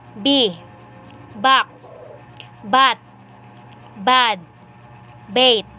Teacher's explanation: Voiced bilabial stop. Initial.